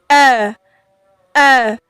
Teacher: sifatnya yaitu syiddah yaitu tertekan suara kita ketika membacanya seperti eh eh jadi ada yang menekan suara kita Sebelum dia